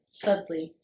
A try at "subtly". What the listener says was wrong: but there's a y subtly you're saying suddenly